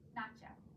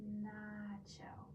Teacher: releasing before you turn on your voice to get that forward air flowing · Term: easy onset